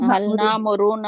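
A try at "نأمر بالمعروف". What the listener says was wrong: نامرونا نہیں، نامرونا نہیں، یہ گروپ میں بھی کسی نے لکھا ہوا تھا نامرونا، اس طرح نون نہیں آتا، یاد رکھیں شروع میں جب نون آ جاتا ہے تو دوبارہ نون نہیں آتا، یہ سارے پکی کر لیں،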